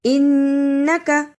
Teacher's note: انکا اسے انکا نہیں پڑھنا، شد کو ادا بھی کرنا ہے اور کاف کے اوپر جو زبر ہے اسے جلدی پڑھنا